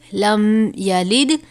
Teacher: لام دال زیر لد، یلد، لم یلد. یہاں پر میم ساکن کے بعد حرف یا آیا ہے، یہاں پر غنہ نہیں ہو رہا کیونکہ یہاں پر اظہار شفوی ہے